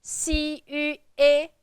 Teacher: Third tone, so you're going down and up. Down and up.